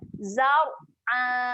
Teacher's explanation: Okey, saya nak fokus huruf ra. Ra dekat sini dibaca dengan tebal. Okey, muncungkan sikit mulut.